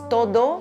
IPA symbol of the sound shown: d